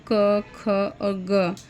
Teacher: इन तीनों का उच्चारण जीहवा मूल से होता है